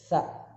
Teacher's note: huruf sa titik 3 itu tempat keluar hurufnya di ujung lidah. Sa, caranya digigit ilatnya.